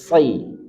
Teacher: Sad dia punya sifat isti'la. Jadi arah dorongan suara ke langit-langit mulut. Kemudian tafkhim. Jadi pangkal lidah itu dia naik sama dengan qa. Sehingga sa tebal, sa.